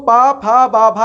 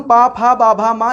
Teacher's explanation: हम पा फा बा भा मा अर्थात पवर्ग को मुंह खोल करके नहीं बोल सकते हैं, जब हमारी ओंठें स्पर्श करेंगी तभी इन वर्णों को हम बोल सकते हैं।